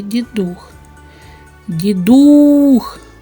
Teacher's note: х він твердий приголосний давайте поставимо наголос у слові Дідух Дідух Отже наголос падає на у